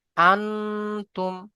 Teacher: নুন সাকিনকে একালি পরিমাণ গুণনা করে পড়তে হবে, ঠিক আছে। এখানে দেখেন নুন সাকিনের পরে এই যে তা এসেছে, তাহলে হামজা নুন জবর আন, তা মিম পেশ তুম, আনতুম।